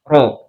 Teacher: Ro ini tempat keluarnya itu ujung lidah. Tapi ujung lidahnya itu bukan persis di ujung di punggung. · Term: huruf ro